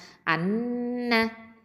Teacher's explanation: ஷத்தா இருக்கிறதுனால இது அக்கமல் குன்னா கொடுக்கணும். நூன் வந்து தரஃபுல் லிசான் எழுத்து நுன்னி நாவு எழுத்து.